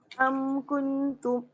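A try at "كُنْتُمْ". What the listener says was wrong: Dia tak rapat. Lidah tu tak rapat.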